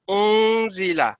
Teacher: پھر یہ اخفاء ہے، آپ نے نون کی آواز کو ناک کے اندر چھپانا ہے، ہاف غنہ اس کو کہتے ہیں